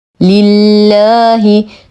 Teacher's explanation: نرقق اللام في اسم الجلاله جل في علاه لانه سبق بكسر